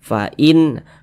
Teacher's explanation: halqiah ini nun sukun berjumpa dengan huruf ko izhar halq dia cara membacanya dibaca jelas tidak berdengung huruf nunnya kita baca jelas · Cara membacanya dibaca jelas, tidak berdengung. Huruf nunnya kita baca jelas. Fa'in, kemudian tidak didengungkan atau tidak digunahkan. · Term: izhar halqi